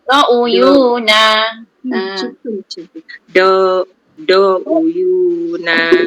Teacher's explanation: Do tu jangan panjang, satu harakat. Dia bukan mak asli, tak ada alif kan depan dia.